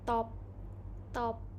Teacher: And then the next one is alveolars. It is sound produced with the front part of the tongue on the bony ridge behind the upper front teeth. So the example is top, top.